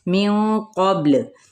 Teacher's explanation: अब नून पे इख्फ़ा हकीकी होगा, मिन क़ब्ल। अब यहाँ पे पुर इख्फ़ा होगा क्योंकि आगे क़ाफ पुर लेटर हुरूफ़ मुतआलिया में से है